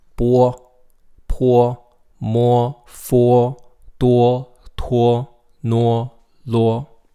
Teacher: The O vowel and the UO vowels are actually pronounced the same. They're both pronounced wo